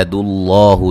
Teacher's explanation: لفظ اللہ کو موٹا ادا کریں گے، اس سے پہلے حرف پر پیش ہے. اللہ الف مدہ ہے.